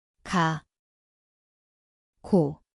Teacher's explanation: ang lugar ay sa likod ng dila